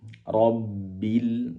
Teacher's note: Rabbil alamin, ro-nya tebal, ro tidak perlu menggerakkan bibir, ro cukup gini, ro, pangkal lidah naik. Rabbil, ketika ba yang bertasdid, durasi penempelan lidah, bibir atas dan bawah lebih lama